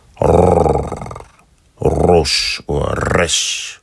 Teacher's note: in my dialect, we supposed to trill this sound. So it will be like the double R in Spanish.